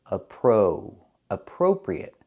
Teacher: Pronunciation, we cannot say appropriate. We have to use the long O for the second syllable.